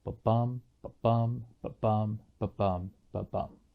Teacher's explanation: an iambic foot, it's just an unstressed syllable followed by a stressed syllable. · An iamb is a type of foot. It goes unstressed, stressed. And because it's iambic pentameter, that means there would be 5 iambs.